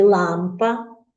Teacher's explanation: так перший звук л але він є твердим